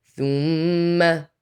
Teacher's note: غنة on the meme to count, hold on it.